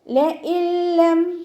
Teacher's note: നൂൻ സാക്കിനയെ ലയിപ്പിക്കുന്നുണ്ട്. പക്ഷെ നമ്മൾ എന്ത് ചെയ്യുന്നില്ല, ഉന്ന കൊടുക്കാതെ ലയിപ്പിച്ചിട്ട് ഓതുക